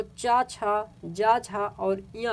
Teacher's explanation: तो तालव्य ध्वनि जो है वो चा, छा, जा, झा और या जो होते हैं ये तालव्य ध्वनि होते हैं